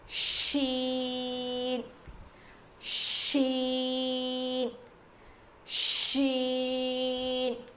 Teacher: زبان کے بیچ کے حصے سے شین ادا ہوتا ہے, جیسے جیم ادا ہوا تھا.